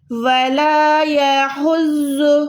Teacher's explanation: وَلَا نہیں ہے یہ وَلَا ہے، ٹھیک ہے، وَلَا، وَلَا يَحُزُّ، ہا کو آپ نے حلق کے درمیان سے ادا کرنا ہے، زود کو آپ نے پروپر موٹا رکھنا ہے